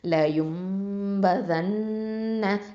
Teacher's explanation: நூனில் தஷ்தீத் இருக்கிறதுனால நம்ம என்ன பண்ணுவோம்? அக்மல் குன்னா கொடுக்கணும்.